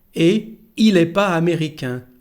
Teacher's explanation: there is no connection between the letter T here and the following word starting with a vowel, because there is no connection with the word et.